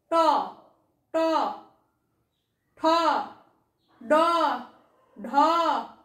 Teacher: এই বর্ণগুলি উচ্চারণ করতে গেলে জিভ কোথায় ঠেকছে? মূর্ধা, তারও তালুরও উপরে ঠেকছে। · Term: মূর্ধন্য বর্ণ